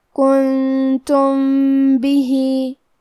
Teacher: کلمت کنتم کے آخری میں میم ساکن ہے، پھر حرف البا ہے کلمت بھی، با حروف الاخفاء الشفوی میں سے ہے، لہذا ہم میم کو چھپاتے ہوئے اور غنہ کے ساتھ یہ حکم کو ادا کریں گے